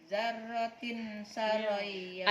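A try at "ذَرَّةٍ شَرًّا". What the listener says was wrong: Ada tasydidnya syar. Kalau tasydid gunanya apa sih? Disentak seakan-akan hurufnya ada dua. Syar. Dzarratin syarran yarah.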